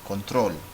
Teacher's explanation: the voice goes up at the end